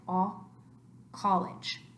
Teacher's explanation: an uh sound but it's a little bit more rounded with the mouth